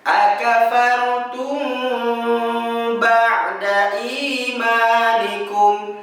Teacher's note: Setelah kita mempelajari nun tasydid dan mim tasydid pada halaman 142, maka kita akan fokus pembahasan pada halaman 151, di mana 151 ini kita akan menemukan bunyi yang berbeda, ialah mim sukun bertemu dengan huruf ba. Ya, kalau dalam istilah ilmu tajwid ini adalah ikhfa syafawi, di mana cara baca tersebut ditahan ya suara kita selama 2 harokat.